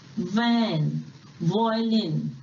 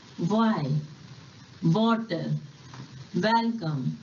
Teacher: जब हम इंग्लिश में व बोलते हैं तो अपर टीथ लोअर लिप को बाइट करता है, जैसे कि वैन, वॉयलिन, एटसेट्रा। और W को बोलते समय हमारे लिप्स राउंड होते हैं